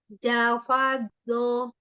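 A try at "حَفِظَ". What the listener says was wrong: Tidak ada titiknya. Ha, bukan j. Hafadho.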